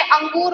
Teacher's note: हमने अंगूर बोला है तो नाक से ज्यादा जो हमारी श्वास है या वायु है वो निकल रही है